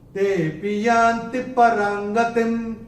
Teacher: ते को थोड़ा सा खींच के बोलेंगे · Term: अवग्रह